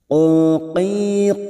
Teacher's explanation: huruf istila huruf tebal Jangan samakan dengan Kaf